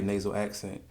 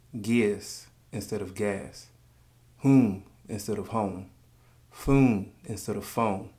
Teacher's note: it's a very nasal accent that I refer to as the cross between Baltimore and New York.